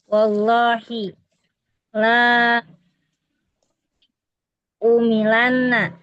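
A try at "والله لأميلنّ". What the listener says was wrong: La lanya la jawabul qasam. Pendek.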